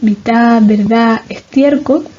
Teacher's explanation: La pérdida de la consonante en posición final